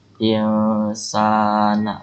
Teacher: nun sukun bertemu dengan sin, itu sebutnya ikhfa, dibacanya dengung.